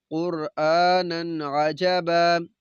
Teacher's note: ادھر بھی نون کے اوپر دو زبر نون تنوین ہے، بعد میں عین حروف حلقی میں سے، تو ہم نے غنہ نہیں کرنا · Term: اظہار